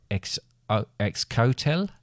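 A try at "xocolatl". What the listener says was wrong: Don't pronounce the X. But pronounce more of a Z. Like, you know Xavier?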